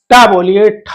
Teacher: जीवा का अग्र भाग जहां पर स्पर्श करता है वो मूर्धा है